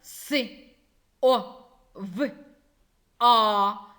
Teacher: перший звук с він правильно приголосний твердий